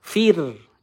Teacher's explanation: sebelumnya ada huruf berharakat kasrah Kita baca dengan tipis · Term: ro sukun